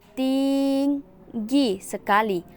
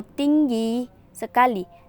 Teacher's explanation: SEG atau sebaliknya misalnya tinggi sekali atau tinggi sekali dalam hal yang pertama dari segmen Ting diucapkan lebih lama sedangkan dalam hal yang kedua dari segmen gi diucapkan lebih lama